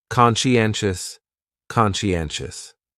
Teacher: the stress is on that third syllable